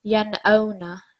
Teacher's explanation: we read it without a nasal sound. We read it in a clear manner. Yan'awna. There's no stretching, there's no pausing on the nun sakin. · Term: clear nun sakin